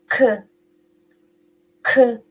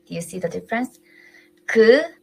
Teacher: But when we pronounce K, much more air comes out. So this little subtle difference make huge difference to us, to Korean, but maybe if you're not trained yet, it may sound the same.